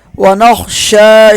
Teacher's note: وإلیک نسعی، عین کو ایک الف کے برابر کھینچیں گے، ونحفد، ہا کو صاف پڑھیں گے، ونرجو، را کو موٹا پڑھیں گے، رحمتک، ونخشی، خا موٹا پڑھا جائے گا، ونخشی، شین کو ایک الف کے برابر ہم کھینچ کے پڑھیں گے